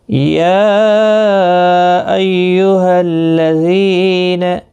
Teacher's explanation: مد منفصل ہوگا، 3 الف کی مقدار کے برابر کھینچ کر پڑھیں گے۔ ایہل تشدید والے حرف کو سختی کے ساتھ پڑھیں تاکہ تشدید ظاہر ہو۔